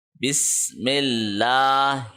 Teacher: بس ملا، میم کو اللہ کے ساتھ جوڑنا ہے کیونکہ اللہ کے لام کے اوپر تشدید ہے، اور اللہ کا لام باریک پڑا جائے گا کیونکہ پچھلا لیٹر یعنی میم کے نیچے زیر ہے، تو بسم اللہ نہیں ہوگا بلکہ بسم اللہ ہوگا۔